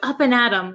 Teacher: we don't pronounce it them we say m we take off the th sound so up and atom sounds like you're gonna you're gonna face